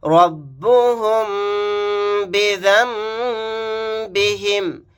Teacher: نون ساکن کے بعد با آیا، یہاں پر نون کو میم سے چینج کر دیں گے، بدل دیں گے، یعنی ذال کے ساتھ میم پڑھا جائے گا، نون نہیں پڑھا جائے گا اور غنہ بھی ہوگا.